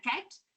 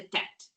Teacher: They'll say cool because they don't have that ability yet in speech production. Um the C often becomes a T before three years of age. So So it's not a t cat, it's a tat.